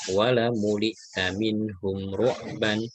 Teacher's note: Ini ada mim sukun, setelahnya ro dibaca izhar ya, dibaca izhar syafawi ya, dibaca jelas.